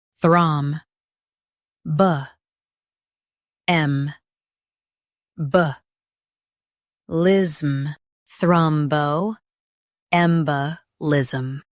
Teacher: Stress 'em and keep thrum clear.